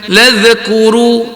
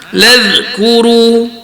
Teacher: Huruf zal tu jaga sikit, jangan bagi dia ada qalqalah. Ya bani Israil ladhkuru, jangan ladhkuru, dia bunyi z tu tak kena.